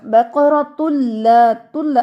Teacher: اچھا، بقرۃ لا، تلا اچھے سے آواز دینی ہے، اس میں نون کی تھوڑا شائبہ بھی نہ ہو کیونکہ یہ بغیر غنہ ہے. تلا، نون کی آواز نہیں آنی چاہیے. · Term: ادغام بلا غنہ